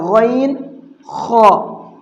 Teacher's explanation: ان دونوں کو منہ بھر کے پڑھنا ہے